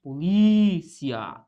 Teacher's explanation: É um encontro entre duas vogais, ó, o I e o A ficam juntos no momento da separação. Qual que é a sílaba tônica aqui? É o li.